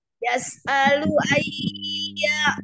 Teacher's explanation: Yas'alu ayya ditekan aja enggak ditahan